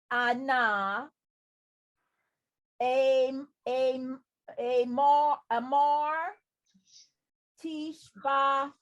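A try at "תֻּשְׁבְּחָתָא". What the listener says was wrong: Not tish. Look at the dots underneath it.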